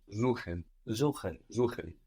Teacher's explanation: So an S vowel syllable gives us a Z sound.